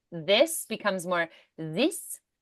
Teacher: the th becomes a z or a d